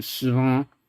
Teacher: the whole thing is kind of just neutralized into 失 望 with like a mid-ish, like slightly high, but mostly just mid-ish without really any kind of contour